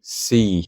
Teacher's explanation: Next, we have eta, and remember, this is just 2 iotas joined together, so it's going to be a long E, like in the English word me, see